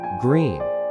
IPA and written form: ɡriːn (green)